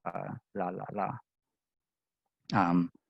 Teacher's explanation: air is going out around the sides of the tongue, like the English la la la. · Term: lateral approximants